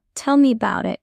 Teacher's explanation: natives often drop the sound, it becomes bout